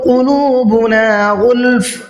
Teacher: غین کو منہ بھر کے پڑھنا ہے غلف کے اندر. اور ہم نے دیکھیے یہاں پر تنوین پر وقف کیا ہے، اور تنوین پر وقف کرتے ہیں تو جس حرف پر ہم وقف کر رہے ہیں اس کو ساکن کر دیتے ہیں.